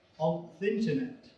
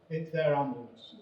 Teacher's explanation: when that tiny definite article precedes a noun that is a vowel, or a silent letter H, the correct pronunciation would be on thinternet